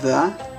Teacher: the d has a th sound as in the you hold your tongue uh there to your teeth